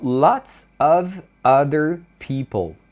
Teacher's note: Então, muitas vezes, quando a palavra que vem depois do avogal, é comum eles emendarem esse V na vogal que vem em seguida